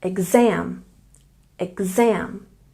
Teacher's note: And exam, we stress the second syllable.